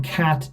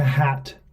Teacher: if I change the k sound to a h, now we change the actual meaning of that word from cat to hat